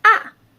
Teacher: the fourth tone is it go down it feel like when you get hurt you will say ah